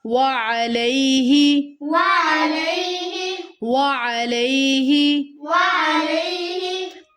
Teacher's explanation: لے کی آواز نہیں آئے گی، حروف لین ہے، نرمی سے ادا ہوگا.